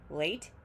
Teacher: When it's one syllable, late, it's fully pronounced, stressed